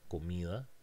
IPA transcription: komiða